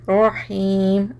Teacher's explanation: रॉ पे again मोटा पढ़ेंगे बिकॉज रॉ के ऊपर ज़बर है। रॉ के ऊपर ज़बर और पेश की सूरत में मोटा पढ़ा जाएगा।